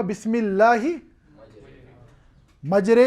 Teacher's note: اصل میں را پر فتح ہونی چاہیے، بسم اللہ مجراہا، ٹھیک ہے، لیکن ہم را کی آواز کو مائل کرتے ہیں یا کی طرف، امالہ کے ساتھ پڑھتے ہیں